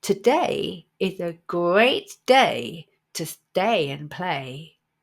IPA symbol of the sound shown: eɪ